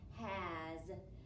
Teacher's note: that S is making the Z sound.